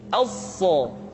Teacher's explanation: Huruf so sama seperti huruf sin dan huruf za, yaitu lidah berada di antara dua gigi seri. As-so. Untuk memudahkan pengucapan huruf so, Perhatikan sifat as-safir yang dimiliki oleh huruf sha, yaitu suara tambahan yang terdengar menyerupai dengan suara angsa.